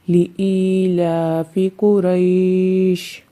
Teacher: اس میں طول کوئی بھی نہیں کرتا کیونکہ اس میں قصر کرنا بہتر ہے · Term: مد لین عارض